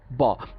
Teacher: ব বলার সময় আমরা মুখটাকে ক্লোজ করছি, মানে খোলা থেকে বন্ধ করছি